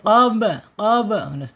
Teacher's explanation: Ketika ada ba sukun, awas kita harus ingat dengan qalqalah. Qalqalah ya harus mantul. Qob. Qob otomatis tuh mantul ya qob.